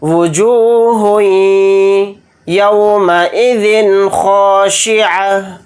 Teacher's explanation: ہا کو یا میں ملاتے ہوئے تھوڑی دیر یا پر آواز کو روک کر ادغام اس طرح سے کریں گے